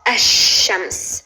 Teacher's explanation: So if you want to say the sun, it's written as al-shams, but it's pronounced ash-shams. So you just drop the L and you emphasize the sheen. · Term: solar letters